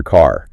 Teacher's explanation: In General American, you get that clear car. You really emphasize the R. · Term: rhoticity